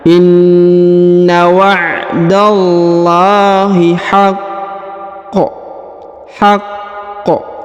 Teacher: Jadi ditahan dan ditekan pada huruf qaf ya